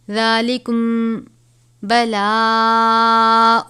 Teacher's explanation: میم ساکن کے بعد حرف با آئے تو اخفائے شفوی ہوتا ہے، یعنی اس پہ غنہ کریں گے